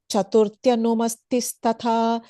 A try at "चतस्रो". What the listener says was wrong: I don't know why you were the emphasis you were putting. There is just chatasro. was sounding like chatasro. Just chatasro.